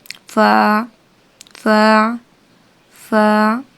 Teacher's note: ثنایا علیہ کے کنارے اور نچلے ہونٹ کے اندرونی حصے کو ملانے سے فا ادا ہوتا ہے